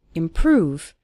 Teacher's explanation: Stress on the second syllable